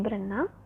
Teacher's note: Misalnya dalam proses penyembuhan prefiks ber pada dasar renang, maka bunyi R yang ada pada prefiks ber dilesapkan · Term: pelepasan fonem